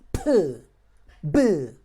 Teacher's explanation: Because of it's your lips, we call them bilabial, and it's because how it's created by pushing the air outside hard. You say p, b are bilabial plosive sounds.